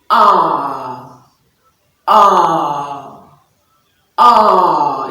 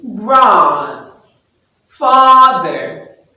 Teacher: with your jaw dropped and your mouth fully open with the tongue very flat and low in the mouth so you find out that the back of the tongue stretches